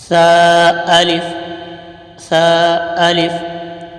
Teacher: जबान का सिरा और ऊपर के दांतों के अंदरूनी किनारे से सा अदा होता है